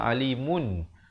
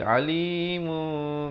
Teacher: Bibir itu dibiarkan hampir bersentuhan saja. Mu dengan kadar dua harakat. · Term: iqlab